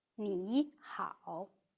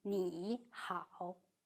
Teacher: [nǐ] and [hǎo] are both third tones. When two third tones are read in sequence, the first syllable turns into the second tone. So [Nǐ hǎo！] is read [ní hǎo] rather than [nǐ hǎo].